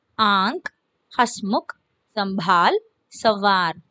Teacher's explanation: इनका उच्चारण मुख और नासिका दोनों से होते हैं. We pronounce अनुनासिक letters through our mouth and nose together.